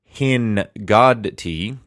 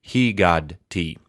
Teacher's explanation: with verbs with a Nun in that R1 position, the initial Nun in a silent schwa position will assimilate. So the Dagesh forte here in the Gimel is that R1 Nun.